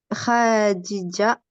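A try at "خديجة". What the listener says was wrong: Ouais, juste ici, il n'y a pas de prolongation en soi. C'est Khadija.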